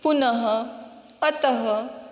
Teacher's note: ये जो विसर्ग है इसका उच्चारण ह ऐसे होता है।